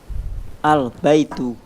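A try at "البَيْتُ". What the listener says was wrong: Naam. Ahsant.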